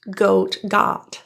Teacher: The vowel in got is an ah with an open, relaxed lip position. Ah, ah. Rather than O or rounded lips as might be expected with the spelling.